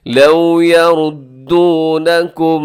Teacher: آگے لو میں آپ کے ہونٹ گول ہو جائیں، واو لین ہے، واو ساکن سے پہلے زبر تو واو لین ہوتی ہے، اگر پیش ہو تو واو مدہ کہلاتی ہے۔